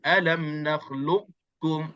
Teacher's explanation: Kita kekalkan qaf tanpa qalqalah. Alam nakhluqukum seolah-olah kita nak qalqalah, nak sebut qaf tapi terus kita melencong pergi terus menyebutkan kaf. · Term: idgham mutajanisain naqis